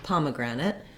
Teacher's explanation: letters say what vowel sounds they make so looking at pomegranate we have first syllable stress so the palm syllable is stressed letter o says ah in pomegranate